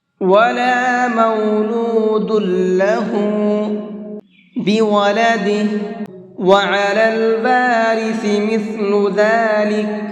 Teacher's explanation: سا کے ساؤنڈ میں سیٹی نہیں ہوتی ہے، سا اس میں سیٹی نہیں ہے، اور اس کا مخرج یہ ہے زبان کی نوک کو اوپر والے سامنے کے 2 دانتوں سے ٹچ کرنا ہے۔